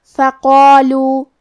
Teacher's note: کلمت فقالو میں بھی قاف ہے اور اس کے بعد مد الف ہے، تو ہم یہ دونوں حرف کو تفخیم سے مطلب بھاری آواز میں پڑھیں گے